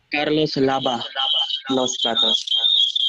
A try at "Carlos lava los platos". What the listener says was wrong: Some of you pronounce it as lava, as in like lava walk. No, we don't pronounce it as v. I know that it's v, but in Spanish we just say b. Okay, so don't try to use the v sound in English because they don't use that. You say lava.